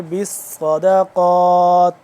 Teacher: تو ہم نے پڑھنا ہے صاد ہے، تھوڑا سا موٹا کر کے پڑھیں گے